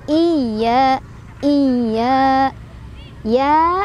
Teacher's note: Ya-nya ada tasydidnya, tapi cukup ditekan aja ya.